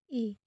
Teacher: sentuhan lidah dan bibir vokal terbagi menjadi dua bagian yang pertama vokal tinggi depan dengan menggerakkan bagian depan lidah langit-langit sehingga terbentulah rongga resonansi seperti pengucapan bunyi I dua vokal tinggi